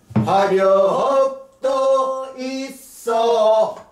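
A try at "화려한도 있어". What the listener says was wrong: 아 화려합도 있어 도에서 끊지 마 화려합도 있어 에서 꺼내듯이 시작 도에서 끊지 마 화려합도 있어 도 있어 어에서 끊어야 될 거 아니야 시작 그 러가 너무 길고 호흡을 그렇게 갖고 가면 호흡이 안 맞는 거야 화려합도 있어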